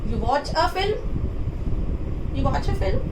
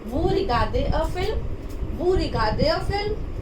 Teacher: Just we are adding here question mark, and we are rising our tone. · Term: intonation way